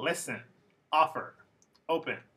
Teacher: So for example, listen, offer, open are all 2-syllable verbs, but the stress is on the first syllable